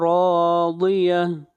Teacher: ضاد حروف استعلاء میں سے ہے، ضاد کو موٹا پڑھیں گے